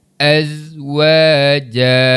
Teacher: Alif mad sebelumnya huruf yang berbaris atas menjadi bacaan mad asli yang perlu dibaca dengan kadar dua harakat. Wau baris atas bunyinya wa dibaca dengan kadar dua harakat.